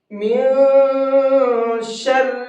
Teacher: من شر نون کو ناک میں چھپا کر کے پڑھیں گے، اس کے اندر اخفا کریں گے، اس لیے کہ نون ساکن کے بعد میں شین ہے اور شین اخفا کے حرفوں میں سے ہے۔